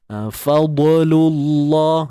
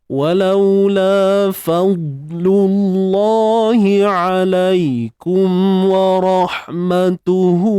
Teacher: kita tebalkan dha ni, tapi jangan bawa dia sampai bunyi itu melantun. Walaula fad bunyi dia macam ketat sikit tuan-puan. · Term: sifat syiddah